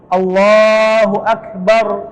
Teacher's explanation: Jadi ro-nya itu tebal dalam kondisi dia sukun. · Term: ro tebal